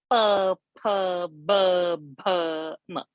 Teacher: Then it is pa varga, lip, labial.